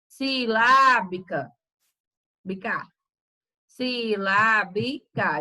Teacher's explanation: Então, lá eu falo ela com mais intensidade. Então, o lá ele é mais forte. · Então, quando eu falar aqui, ó, silábica, então veja que o lá eu demoro mais falando ele, já o resto eu falo rápido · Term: sílaba tônica